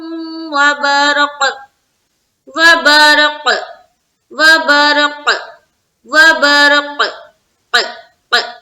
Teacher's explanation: काफ जो है हुरूफ कलकला में से एक है, तो हमारी आवाज लौटती हुई मालूम होनी चाहिए